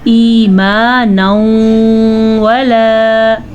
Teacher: ایمانا ولا، ادغام بالغنہ، نون تنوین کے بعد یمون میں سے واو آیا ہوا ہے تو یہاں پہ غنہ ضرور ادا کرنا ہے